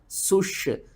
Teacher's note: سین کو سیٹی کے ساتھ پڑھنا ہے، شین کے اوپر آپ نے سختی کرنی ہے۔